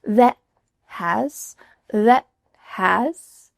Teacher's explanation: You're making a T sound, you're just not letting that puff of air escape. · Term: stopped T